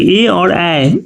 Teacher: ए और ए का उच्चारण जो है वो कंठ तालव्य कहलाता है।